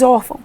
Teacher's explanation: Mas a sílaba tônica é or.